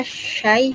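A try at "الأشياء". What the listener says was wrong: Bukan syai. Ini dikasih mat. Bukan. Jadi gini, tadi tuh banyak kan asyai, bukan syai. Jadi ada matnya, mat.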